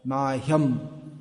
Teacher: The tendency in English is to drop the sound H, but it should be pronounced.